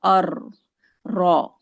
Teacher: उल लिसान से ही एक और हर्फ र अदा होता है जब जुबान की तरफ सामने के जो दो दांत हैं ऊपर वाले उनके पीछे नरम मसूड़ों से टकराती हुई